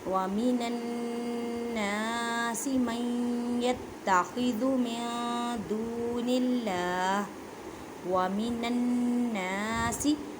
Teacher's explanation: نون مشدد ہے، گنہ کریں. الف سے پہلے زبر ہے، الف مدہ کا قاعدہ کریں.